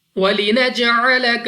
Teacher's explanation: جیم قلقلہ میں سے ہے، یہاں پر ہماری آواز ہمیں واپس سنائی دینی چاہیے جب ہم اس کو ادا کریں گے